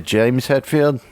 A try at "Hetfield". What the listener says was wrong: No, that's Hetfield, not Hatfield.